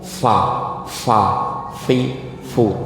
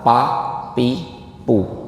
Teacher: suaranya fa itu jadilah nggak pakai gigi, tapi pakai bibir yang dibuka dikit. Fa, fi. Fu itu mending daripada dibaca pa pi pu ya seperti itu. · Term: huruf fa